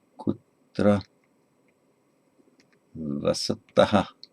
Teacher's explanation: that's going to have the ta, unaspirated ta ending